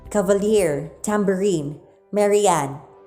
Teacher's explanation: Anapistic foot consists of two unaccented syllables followed by an accented syllable